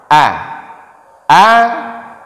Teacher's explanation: Hamzah itu keluar dari pangkal tenggorokan